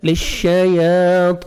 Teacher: طا کو موٹا کر کے 1 سیکنڈ آپ نے کھینچنا ہے